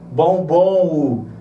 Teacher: Por que eu vou chamar de ditongo fonético? Porque quando eu pronuncio a palavra bombom, essa última pronúncia aqui é como se fosse um O e a representação do U foneticamente é um W. Então parece que é um U, bombom, né?